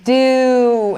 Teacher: the starting point and ending point of the sound is not the same like you start with your lips a little more relaxed do and then you push it all the way forward the